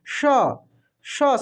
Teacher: इसको मूर्धन्य स को हम लोग पूरे अंदर से बोलते हैं